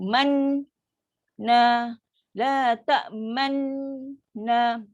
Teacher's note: Ismam maksudnya memunculkan dua bibir sebaik saja sukun huruf nun.